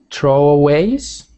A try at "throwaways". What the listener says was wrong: Yep, so that, make sure you've got the TH sound. You don't ever want it to sound like like tro. It must always be throwaways.